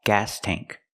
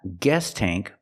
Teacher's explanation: The sound is different. We use the ah sound like black cat. It's more open. The tongue is down in the front and up in the back. Gas tank. Not guest tank, but gas tank.